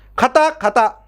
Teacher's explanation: ఇక్కడ మహాప్రాణం బదులు అల్పప్రాణం వచ్చింది